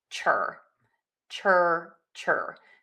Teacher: you're going to touch the tip of the tongue to the back of the top front teeth where you say a T to start that CH